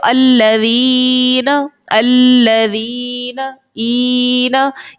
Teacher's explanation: یہ جو ای کی آواز آ رہی ہے یہ منہ کے خالی حصے سے ہماری آواز نکل رہی ہے